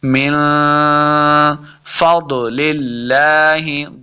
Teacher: ضاد حروف مستعلیہ سے اس کو موٹا پڑھیں گے. للہ، لفظ اللہ کے لام کے اوپر کھڑی زبر ہے، اس کو 2 حرکات لمع کریں گے.